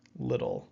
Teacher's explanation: Even though there's two T's, we really make it like a D sound